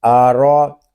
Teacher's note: را کے اوپر زبر ہے، اس کو ہم پر پڑھیں گے